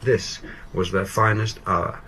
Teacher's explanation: Whereas in your case, you're reading it, you're just sort of happy to get to the end of the paragraph. And so you fall in pitch very naturally.